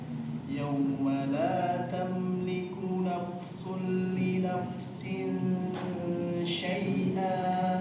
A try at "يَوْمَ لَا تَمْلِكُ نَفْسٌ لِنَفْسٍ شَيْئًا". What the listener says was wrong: Perjelas pengucapan fa-nya. Nafsul. Ya. Jangan sampai hilang.